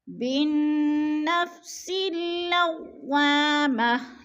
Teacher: پہ الف مدہ ہے، الف خالی سے پہلے دو ہے تو الف مدہ کو الف 2 حرکات کے برابر ہم نے کھینچ کر پڑھنا ہے